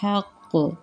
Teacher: ہل حق، ہا کو باریک پڑھیں گے۔ حق، میں قلقلہ کر رہی ہوں